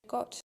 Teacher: producing glottalized versions instead of pre-aspirated versions